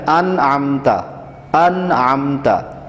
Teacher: انعمتا میں نون ساکن کو بالکل واضح پڑھنا ہے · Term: اظہار حلقی